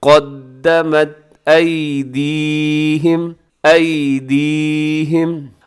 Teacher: ابداً بما، آگے قدمت، دال کے اوپر شد ہے تو مضبوطی کے ساتھ پڑھیے گا، قاف موٹا رکھیے گا